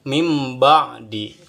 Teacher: jadi nun mati diganti dengan mim mati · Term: iqlab